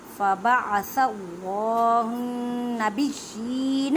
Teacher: اللہ کے لفظ کو پر پڑھیں کیونکہ اللہ کے لفظ سے پہلے زبر ہے، نون مشدد غنہ کریں.